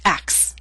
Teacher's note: we have three consonant sounds c t s these are voiceless sounds and we drop the middle one which happens to be a t